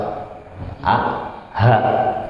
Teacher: Di aqsa ataupun di pangkal keluar huruf yang paling bawah ini, huruf a dan h, hamzah dan h. Jadi nariknya paling dalam, a, h ya.